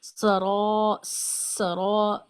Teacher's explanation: سین میں سیٹی کی آواز، اور را میں موٹا بھی، اور الف کو مدہ کی وجہ سے کھینچنا بھی ہے. الف مدہ کے بارے میں ہم پڑھ چکے ہیں کہ الف مدہ کی اپنی تو خاص آواز کوئی نہیں ہوتی ہے، لیکن پچھلے حرف کو اس طرح کھینچتے ہیں کہ آخر میں آواز سنائی دیتی ہے.